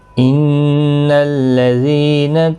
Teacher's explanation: ان الذین، نون مشدد پر غنہ ہوگا، ذی یا مدہ ہے، ایک الف کی مقدار کے برابر کھینچ کر پڑھیں گے۔